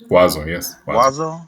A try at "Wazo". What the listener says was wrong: You when you say, it sounds to me that you use the word V, vaso, right? But W means usually like no V, wazo.